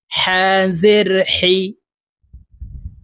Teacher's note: হা হরফ হালুকের মধ্যখান থেকে উচ্চারণ হবে কারণ হার মাখরাজ হালুকের মধ্যখান থেকে হবে হা জের হি জের